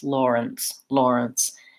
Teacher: the syllable is short and reduced it almost has no vowel it's almost like just an ns · And we do have first syllable stress here. So that means the lore syllable is important and has a clear vowel, and the nth syllable is short and reduced. It almost has no vowel. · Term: unstressed schwa